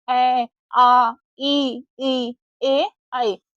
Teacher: जब हम इन स्वरों का उच्चारण करते हैं तो हमारे होठ जो है वो गोल नहीं होकर थोड़े से फैल जाते हैं। · अवर्ताकार स्वर या अनराउंडेड स्वर कहते हैं। जिन स्वरों के उच्चारण में होठ गोल नहीं होते वे अगोल स्वर कहलाते हैं या अवर्ताकार स्वर कहलाते हैं।